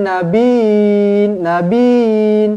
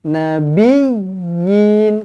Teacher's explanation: ya yang pertama ini dibaca dengan tekan lebih sikit. Sebab dia ada sabdu. Jangan nabin, nabin.